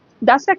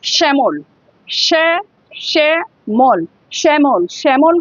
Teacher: এবার যদি বলি শ্যামল, শ্যামল, শ্যামল, শ্যামল হলে স এর পাশে দেখো একটা, দেখো শ্যা, শ্যা হলে মানে স এর পাশে একটা হ উচ্চারণ হচ্ছে, সেই জন্য শ্যামল, SH। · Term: তালব্যস্য